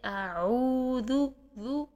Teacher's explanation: پھر اس کے بعد آپ ذال کی پیش کو پورے گول ہونٹوں سے ادا کریں گی۔ کم ہونٹ گول کریں گے تو آپ مجہول کر دیں گے